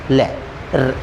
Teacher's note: ये दांतों से इनका लय, आपने देखा लय बोला तो दांत, जीभ हमारी और सांस हमारी लय बोलते हुए दांतों को स्पर्श कर गई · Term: दंतव्य